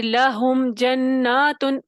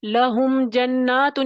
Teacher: میم کو ادا کرنا ہے، میم کی آواز آئے گی، لیکن کیا کرنا ہے؟ میم کو دبانا نہیں ہے · میم کی آواز بالکل بھی نہیں دبی. لہم جناتن، یہ پھر تو ہلکی سی دبا دی. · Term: اظہار شفوی